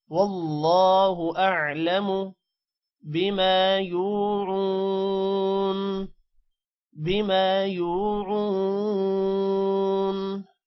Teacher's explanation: اللہ کے نام کو موٹا کرنا ہے، ہو کو لمع نہیں کرنا، اور منہ کو بھی اعلم لمع نہیں کرنا.